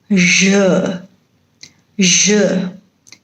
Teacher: This sound is not there in Indian languages and therefore it is very difficult for some Indian speakers to pronounce this or produce this sound, j. It is not sh, it is not z, but somewhere in between these two sounds. So it is j, j.